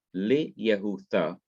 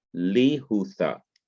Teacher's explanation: the yoth and the short hirik join together to form the long vowel, the long hirik or kirik. So now instead of having Li Yehutha, this becomes Li Hutha to Judah.